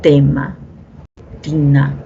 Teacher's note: Para los sonidos D y T, porque estas son dentales por el punto de articulación.